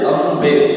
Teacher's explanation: ಪ ಅಕ್ಷರ ಬಂದಾಗ ಮ ಅನ್ನ ಚಂಪಕ ಅಂಬೆ ಅಂಗ ಅಂ ಅಂಬೆ ಅಲ್ಲ ಅಂಬೆ ಪೂರ್ತಿಯಾಗಿ ಮಕಾರ ಪೂರ್ತಿ ಉಚ್ಚಾರ ಮಾಡಬೇಕು